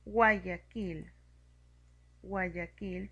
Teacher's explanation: tenemos el encuentro de la vocal U, que es cerrada, y la vocal A, que es abierta. Tenemos un diptongo creciente.